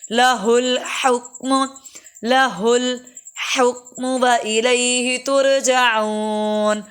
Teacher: لہ الحکم، پہلا ہا بھاری ہے، دوسرا باریک ہے